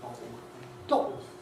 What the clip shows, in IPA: ˡbɒʔo